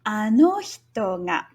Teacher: This is a nakadaka pattern where no is high and the rest are all low, including the particle.